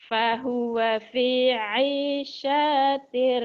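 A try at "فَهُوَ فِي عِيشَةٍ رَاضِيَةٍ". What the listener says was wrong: Syanya pendek. Syanya pendek.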